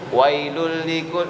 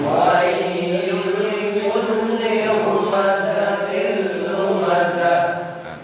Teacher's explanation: yang au itu dan ai itu namanya mad layin. Mad panjang, layin lembut. Jadi emang kudu dipanjangin sambil dilembutin.